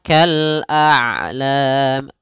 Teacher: Syiddah syiddah tertahannya suara, rokhawah mengalirnya suara. Ain itu kedua-duanya tidak terlalu dialirkan, tidak terlalu ditahan suaranya. Maka kal a'lam masih ada setengah-setengah.